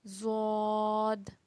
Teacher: زبان کی کروٹ جب اوپر کی داڑھوں سے لگے تو ادا ہوتا ہے زواد